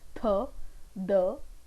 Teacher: The tip of the tongue is the active articulator and the upper front teeth are passive articulators. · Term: dental sound